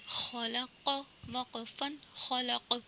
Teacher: آواز پلٹ رہی ہے دونوں جگہ پہ، یہاں پہ قلقلہ ہو رہا ہے، جیسے خلق، وقفا خلق، وقف کی صورت میں ہوگا، خلق، وقفا خلق۔